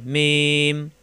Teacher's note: দুই ঠোঁট থেকে উচ্চারণ, মিলানো ঠোঁট ছেড়ে দিয়ে মিলালি হয়ে যায়, মিম।